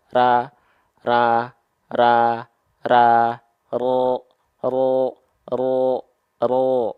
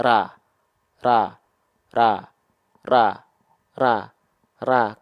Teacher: terlihat bedanya antara mengangkat pangkal lidah dan tidak mengangkat